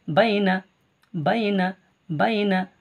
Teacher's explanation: ইয়ালিনকে তাড়াতাড়ি পড়তে হবে, ইয়া মাদ্দাকে টান দিয়ে পড়তে হবে